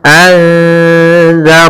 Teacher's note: Ikhfa artinya pada dasarnya menyembunyikan, tapi dalam hal ini dia menyamarkan, sehingga di sini ikhfa hakiki maksudnya apa? Yaitu kita menyamarkan suara nunnya kepada huruf zal, atau suara nunnya disamarkan ke zal, sehingga bukan lagi anzarna, tidak dibaca dengan jelas sebagaimana izhar, atau tidak dihilangkan sebagaimana idgham, sehingga kita menyamarkan di antara keduanya.